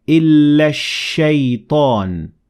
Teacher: I completely ignored Hamzatul-wasl and the lam, and I connected the alif in illa directly to the sheen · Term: sun al